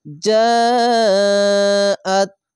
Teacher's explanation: মোটা চিহ্ন মাধ্যে লাজিম চার আলিফ টেনে পড়বেন